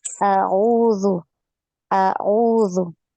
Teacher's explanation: Jadi harus beda ya bunyi hamzah dengan ain ya. A dulu disempurnakan hamzahnya. A baru masuk di ain.